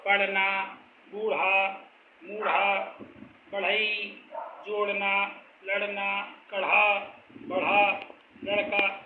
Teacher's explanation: ये ध्वनियाँ विसर्ग मूर्धन्य होती हैं। इन ध्वनियों को उच्चारण करने के लिए मूर्धा से रगड़कर ध्वनि उत्पन्न की जाती है, जबकि शुद्ध मूर्धन्य में जीभ को मूर्धा से केवल स्पर्श किया जाता है।